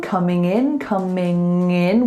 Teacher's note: We link the G sound, coming in, with like a nasal link.